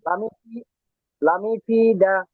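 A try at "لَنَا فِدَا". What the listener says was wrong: পেশ নাই তো, নুনের উপর জবর, ফাতহা। লানাফিদা।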